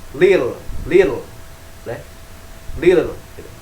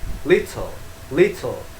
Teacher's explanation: Pengucapan huruf T-nya Amerika itu flat ya, sangat datar gitu. Seperti L, kadang juga seperti D. Di British itu sangat clear T ya. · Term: the T sound